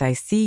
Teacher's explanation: When you show understanding with I see, your tone drops slightly to show calmness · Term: falling tone